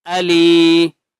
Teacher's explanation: یا مدہ ہے، لام کو ایک الف کی مقدار کھینچ کر پڑھیں گے